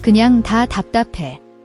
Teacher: The dap has a final P sound that is unreleased, meaning you close your lips but don't release the air. It's a very subtle P.